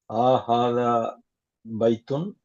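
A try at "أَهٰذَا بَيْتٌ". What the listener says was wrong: அஹாதா, ஆஹாதா இல்ல. அஹாதா பைத்துன், அஹாதா பைத்துன். இழுக்கப்படாது. அஹாதா பைத்துன்.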